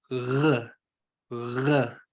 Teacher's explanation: That g sound. So instead of it floating out, you're using a fricative in the back